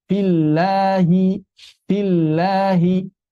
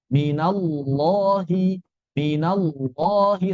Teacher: Dari sisi aliran suara sama bedanya dia dibaca tebal.